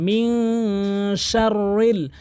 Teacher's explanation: এই 15টি হরফ যদি নুন সাকিনের পরে দেখেন, তাহলে কিন্তু আপনি অবশ্যই নুন সাকিনকে নাকের ভিতর নিয়ে পড়বেন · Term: ইকফা হাকিকি গুন্না